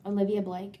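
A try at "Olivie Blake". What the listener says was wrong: No, it's like just with like an E.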